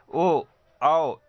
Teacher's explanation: ये सभी स्वर जब आप बोलेंगे तो जीभ पीछे की तरफ जाता है, इसीलिए इसे पश्च स्वर कहा जाता है।